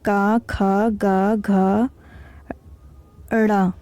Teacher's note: का जब बोलते हैं तो हमारा जो वायु है उसका प्रेशर कहाँ है, प्राण वायु जो उसका प्रेशर गले पे है, इसलिए इसको कंठे व्यंजन बोलते हैं। का, खा, गा, घा, ड़ा, ये सब क्या है, कंठ व्यंजन है।